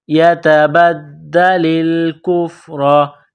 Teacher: وَمَن يَتَبَدَّلِ الْكُفْرَ تا کو باریک کرنا ہے، نقطوں والی تا ہے۔ دال مشدد ہے تو دال میں سختی کرنی ہے، دال کو دبانا ہے۔ يَتَبَدَّلِ الْكُفْرَ کاف کو باریک کرنا ہے، فا کے ساتھ ملانا ہے۔